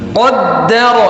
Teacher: qaf tebal, dal tipis, ra tebal